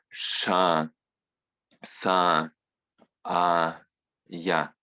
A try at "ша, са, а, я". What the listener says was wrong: Да, хорошо.